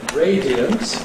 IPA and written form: ˈreɪdiənt (radiant)